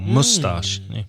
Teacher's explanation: you sometimes hear that word pronounced with the stress on the first syllable